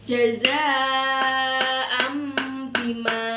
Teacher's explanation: Jadi, iqlab itu adalah mengganti suara nun atau tanwin atau mim mati bertemu salah satu huruf hijaiyah yaitu huruf ba. Cara membacanya yaitu dengan satu alif atau dua ketukan